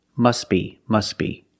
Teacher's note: the t is silent because it's between consonants when you link the words